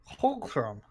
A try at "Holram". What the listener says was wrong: You're putting Holram. Like k's in there. It's just Holram.